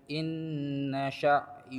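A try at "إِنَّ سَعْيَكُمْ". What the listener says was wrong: Sinnya buka lagi, tarik lagi. Inna sinnya sa'yakum. jangan mikir shinnya syatta Pak ya. Itu nanti kalau sudah sampai huruf shinnya. Nah, jangan dipikir dulu. Inna sa'yakum lasyatta.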